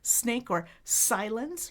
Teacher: So I'm creating friction on the bump with the tip of my tongue. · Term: S sound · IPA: /s/